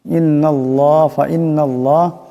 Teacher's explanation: নুন মুশাদ্দাদের এক আলিফ পরিমাণ গুন্না হবে ইন্নাল্লাহ ইন্নাল্লাহ আল্লাহর লামের ডানে জবর আসছে এটা আল্লাহর লামকে মোটা · আল্লাহর লামের ডানে জবর আসছে এটা আল্লাহর লামকে মোটা করে পড়তে হবে